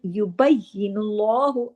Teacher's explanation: में आना चाहिए इसको ढीला ढाला नहीं पढ़ना युबु्ला नहीं युबुल्लाहु अल्लाह के नाम से पहले पेश है तो लाम को हैवी भी करना है